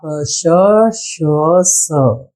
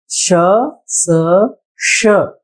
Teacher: इन ध्वनियों को ऊष्म्य कहा जाता है, क्योंकि यहाँ पर गर्म हवा दांतों को दबाकर बाहर निकलता है। और उसमें भी 3 अलग अलग ध्वनियां आती हैं।